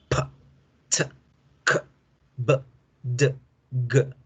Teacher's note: Son consonantes plosivas, cada una de acuerdo a su parte. La P con la B, plosivas bilabiales. La T con la D, plosivas alveolares. La K con la G, plosivas velares.